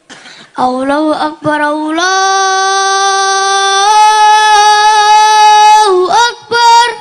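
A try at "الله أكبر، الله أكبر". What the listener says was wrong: Tambah alon kaya ngadani mayat no kuburan. Adzan sing semangat banter kae.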